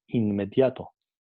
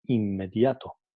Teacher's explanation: la M ha afectado a la N alveolar y pasa a ser un sonido N bilabial